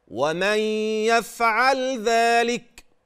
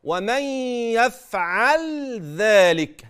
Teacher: بيان صفه اللام البينيه بلطف ورقه بلا تعسف او تكلف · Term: الاظهار